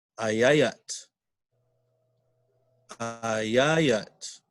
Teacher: you hear where the sound picks up, the sound goes up. Ayayat on the second A. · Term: stress